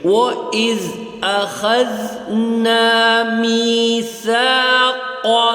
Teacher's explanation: اخذنا کی زال جو ہے وہ بھی زبان کی نوک سے ادا ہوگا